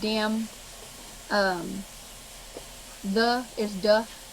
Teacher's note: the Cajuns and South Louisiana put a lot of emphasis on the D's in their words, like especially at the beginning of words, like that becomes dat, and over there becomes over there.